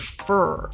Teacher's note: the middle of the tongue rises up in the mouth while the root of the tongue is pulling backwards and you might have some lip rounding as well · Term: bunched r